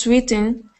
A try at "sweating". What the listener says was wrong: Sweating, not sweeting, so we've got sweat. Sweet is E and sweat is egg. Sweat.